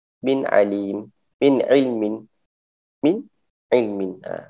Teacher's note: dibaca terang, jelas dan tidak dengung. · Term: izhar halki